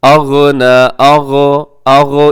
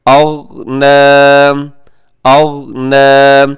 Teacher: آپ نے کوشش کرنا ہے کہ یہاں پہ قلقلہ نہ ہو، یعنی آواز ڈبل نہ ہو۔